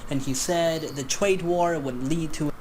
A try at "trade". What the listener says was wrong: When this guy says trade, why does it sound like Tweed to me? Am I imagining that? Tweed? Trade?